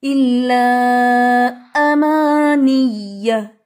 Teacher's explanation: حمزہ کو مرج نہیں کرنا بلکہ اس کو سختی سے پڑھنا ہے